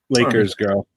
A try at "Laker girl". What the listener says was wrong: No, it's Laker girls. No S.